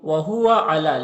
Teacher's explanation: لام میں کھڑا زبر ہے، ایک الف کے برابر کھینچیں گے